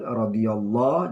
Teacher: Allah ini adalah lam tafkhim, dibaca tebal. Radiyallahu, jangan radiyallah tapi radiyallahu.